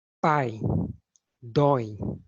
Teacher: quando abrimos mais a boca para pronunciá-lo esse ditongo recebe o nome de ditongo aberto